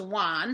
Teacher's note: want becomes one so the t is softened to the n and deleted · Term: consonant cluster reduction